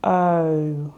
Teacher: the O is actually a diphthong sound where your mouth transitions from an open to a closed position